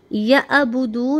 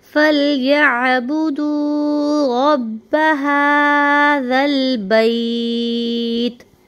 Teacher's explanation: हमज़ा की आवाज़ सीने में से आएगी और आइन की जो आवाज़ होगी वो हल्क में से आएगी। आइन और हमज़ा, आइन की और हा की आवाज़ हल्क में से आएगी, तो आपने इन दोनों की आवाज़ को हल्क में से ही निकालना है।